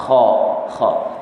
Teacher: Kalau ha dia istifal, manakala kha dia isti'la. Sebab itu bila kita menyebut huruf kha macam terangkat, pangkal lidah kita terangkat. Kha. Kalau kita tak angkat kan, kalau pangkal lidah kita tak angkat, maka jadi kha. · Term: sifat isti'la